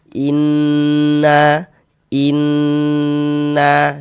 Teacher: Jadi di bagian innnya itu suaranya itu kita tahan sejenak ya sepanjang dua harakat. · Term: ghunah musyaddadah